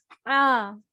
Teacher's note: ہا پلس الف ہا اس کو حلق سے نکالنا ہے ہا جب ہا نکلتا ہے تو حلق میں رگڑ کھا کے آواز سے نکلتا ہے اور یہ وسط حلق سے نکلتا ہے